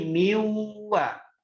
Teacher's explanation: Jadi nun ketemu wawu digabung jadi miwa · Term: idgham bi gunnah